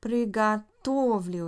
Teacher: Приготовлю is the ya form. It's not stressed on the end